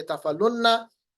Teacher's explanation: लाम को नून के साथ डायरेक्टली जोड़ेंगे और इस वाव को हटाएंगे, तो यफ़अलूना पढ़ने के बजाय यफ़अलुन्ना पढ़ेंगे। · और तफ़अलूना बनेगा तफ़अलुन्ना, यहाँ पर दिया गया है क्यों, तफ़अलूना से ये तफ़अलू बनेगा, इसको हमने खफीफ किया, उसके बाद तफ़अलूना नून को तशदीद के साथ जोड़ दिया। अब यहाँ वाव नहीं पढ़ा जाएगा, वाव को हटाएंगे क्योंकि ये हमारे पास कमजोर हर्फ है, हर्फ इल्लत, तो हम पढ़ेंगे तफ़अलुन्ना।